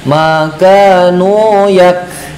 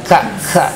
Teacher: Kemudian ada sifat yang khusus dalam sifat huruf ee kaf itu artinya ada angin yang berhembus ka gitu ya. Maka ketika dalam keadaan sukun itu ada sedikit angin yang berhembus. Misalkan makanu yak gitu ya agak ada ka gitu ya. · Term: huruf kaf